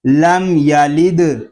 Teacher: اس کو لام دال زیر لد نہیں پڑھیں گے، دال ساکن ہے، اس میں قلقلہ خوب ظاہر کریں گے